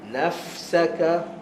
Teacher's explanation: Fa ada hams, maka selesaikan hams dia dulu sebelum masuk pada sin.